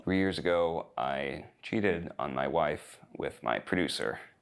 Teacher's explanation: Dude, what insane vocal fry? Why does he talk like a Kardashian?